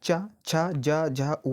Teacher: तालव्य से हमारा इनका उच्चारण होता है। जैसे कि जब चा बोलेंगे, झा बोलेंगे, जा बोलेंगे, झा बोलेंगे, तो आपकी जीभ जो है डिफरेंस तालु को टच करेगी और ये आपके तालव्य से रिलेटेड आपके हो जाएंगे।